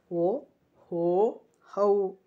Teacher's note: ಕಂಠ ಮತ್ತು ತುಟಿಯ ಸಹಾಯದಿಂದ ಹುಟ್ಟುವಂತಹ ಅಕ್ಷರಗಳನ್ನು ಕಂಠೋಷ್ಟಿ ಅಂತ ಕರೆಯಲಾಗುತ್ತದೆ